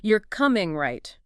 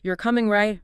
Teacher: Compare you're coming right, rising, checking versus you're coming right, falling sounds more like a statement expecting agreement.